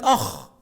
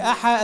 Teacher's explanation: حرف الخاء ليس له وجود في السريانية، السريانية ما فيهاش حرف الخاء وإنما ينطق حاء، فكلمة أخ العربية هي أحا السريانية، فالسريانية لغة ضعيفة منتحلة من العربية القديمة.